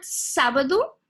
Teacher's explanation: in this case you're gonna have a three syllable word sabado and you have the accentuation on the first syllable